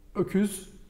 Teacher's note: Ends in ü, so it's not öküzim. We don't move our lips.